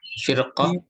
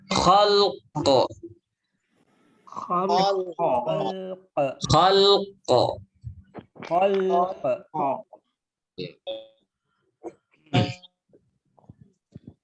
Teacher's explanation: Rohnya dibaca tebal. Karena setelahnya ada huruf isti'la yang berharokat fathah.